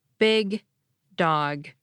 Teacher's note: As you're keeping the back of your tongue pressed against your palate, you're also maneuvering the tip of your tongue into place just behind your top front teeth. Only when it's securely in place can you let the back of your tongue come down again, and then you can release the D to finish saying dog. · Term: unreleased allophones